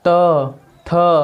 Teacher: त, दांत पर जोर दिया जा रहा है, दांत पर। त, थ, हमारा जो जिह्वा है वो दांतों को स्पर्श कर रही है। त एक चोट कर रही है, दांत को हल्के से मारकर हट जा रही है। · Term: दंत्य व्यंजन